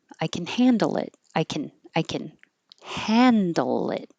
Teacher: If it's positive, can will sound like can very short can. And then the stress will be on the verb.